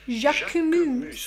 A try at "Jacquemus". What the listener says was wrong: Of course, in French, the sound of the letter U is not OU, but rather U. So Jacquemus.